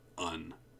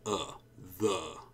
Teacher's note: Well, the answer is that it should be the, un, because these are function words. They're unstressed. So these vowel sounds should turn into a schwa sound.